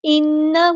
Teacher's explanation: نون پہ غنہ زمانی ہو رہا ہے